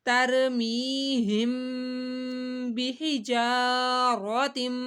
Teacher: میم ساکن ہے اور اس کے بعد با آ رہی ہے تو یہاں پہ ہم نے غنہ کرنا ہے